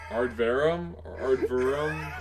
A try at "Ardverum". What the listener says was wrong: I'm not sure what you said, but I don't even think there was a V in the correct spot.